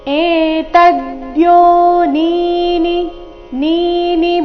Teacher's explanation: ತ ಮೇಲೆ ಆಘಾತ ಬರಬೇಕು. ಮೊದಲನೇ ನೀ ದೀರ್ಘ ಇದೆ, ಎರಡನೇ ನೀ ರಸ್ವ ಇದೆ.